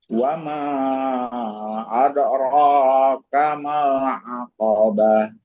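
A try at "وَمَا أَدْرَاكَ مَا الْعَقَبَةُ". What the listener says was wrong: Pokoknya jangan terlalu panjang. Adraka mal.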